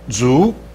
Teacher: Now this is the second tone, so it's rising